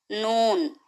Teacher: जबान की नोक को ऊपर के दांतों के मसूड़ों को लगाने से नून निकलता है।